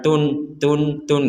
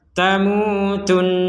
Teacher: ya kemudian di rongga hidung kita didengungkan Tun ada dengungannya bukan sekedar tun tun tun gitu kalau seb